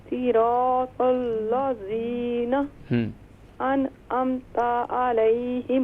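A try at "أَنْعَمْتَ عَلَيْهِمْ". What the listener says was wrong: انعمت علیہم، تا کو شارٹ ساؤنڈ کریں گے.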